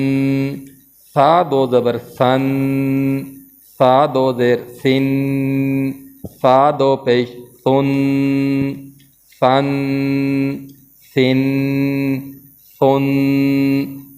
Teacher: زبان کے کنارے جو ہیں اوپر والے دانتوں کے ساتھ لگیں گے اور نرمی کے ساتھ لگیں گے۔